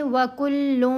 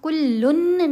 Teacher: یہاں ہم پڑھیں گے وَكُلٌّ، کلن نہیں پڑھنا، نون کی آواز کو ناک میں چھپانا ہے